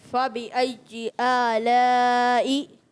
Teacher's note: اسی طرح یا پر تشدید ہے تو یا کی تشدید ظاہر ہونی چاہیے